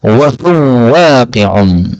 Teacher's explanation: karena wawu ketemu wawu maka bisa diidghamkan. Maka bacanya wa huwa waqi'un.